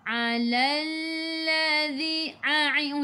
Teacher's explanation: Alalladzi lam ada sabdu tekan ke dalam lam. Alalladzi a'i'u daripada kerongkong bukan daripada hidung. Zadzi hujung lidah keluar pada gigi depan.